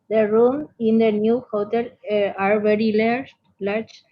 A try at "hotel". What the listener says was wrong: La H no se pronuncia. Hotel.